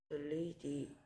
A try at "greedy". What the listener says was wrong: 자꾸 L 소리처럼 되네요. Gleedy가 아니고요. Greedy. Or 하면서 or 혀를 뒤로 밀어 넣으면서 or.